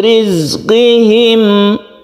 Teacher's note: Sukun za ini tidak qalqalah, artinya jangan dipantulkan, bahkan dia itu bersifat shafir atau berdesis.